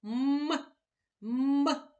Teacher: коли ми промовляємо звук м струмінь повітря зустрічає перешкоду на своєму шляху і це наші губки звук м приголосний твердий позначаємо його однією рисочкою А ще ми